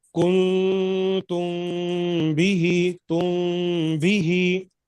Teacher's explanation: اسی طریقے سے یہاں بھی اخفاء شفوی میں میم ساکن کے بعد اگر با آئے تو میم کی آواز کو ہم ناک میں چھپائیں گے